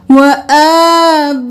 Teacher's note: एक अलिफ के बराबर खड़ी जबर को खींचना है और 5 अलिफ के बराबर बा को खींचना है । आ को 1 अलिफ के बराबर, बा को 5 अलिफ